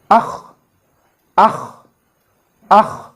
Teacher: Hamza, kha, fatha, akh, akh, akh. See, the voice stops at the initial part of our throat